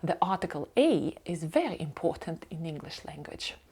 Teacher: якщо в нас a є під наголосом він змінює вимову з е на a але дуже часто майже завжди артикль - цей маленьке слово воно